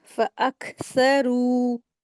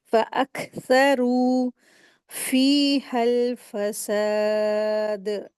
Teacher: را کو 2 حرکات کھینچیں گے